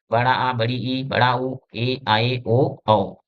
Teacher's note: इन स्वरों का उच्चारण ह्रस्व स्वरों की अपेक्षा अधिक समय तक होता है। यानी जो दीर्घ स्वर होते हैं इनका उच्चारण हम ह्रस्व स्वर की अपेक्षा ज्यादा समय लेते हैं।